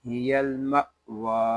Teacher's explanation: یہاں واو کو ایک الف تک کھینچ کر پڑھیں گے، کیونکہ یہاں کھڑا زبر ہے.